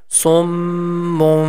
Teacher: And like that here in this example, sum mun, it's mun, and now the tiny meme is written after that, which means the sound of noon we are going to convert into meme with nasal sound. It becomes summum.